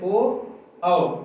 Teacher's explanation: देखिए जैसे ओ औ, इनका जो उच्चारण हो रहा है कंठ और ओष्ठ, इनके उच्चारण में कंठ ओष्ठ दोनों का प्रयोग हो रहा है।